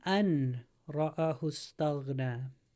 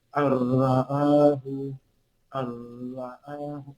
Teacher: It's idgham, yeah. So we're not pronouncing the noon. It's double R. Adding one letter to another one, so the noon is canceling out and joining the R.